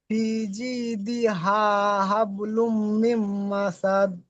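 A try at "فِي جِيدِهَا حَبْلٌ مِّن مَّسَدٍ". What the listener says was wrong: মাশাল্লাহ, এইরকম পড়া চাই, আমার এইরকম পড়া চাই।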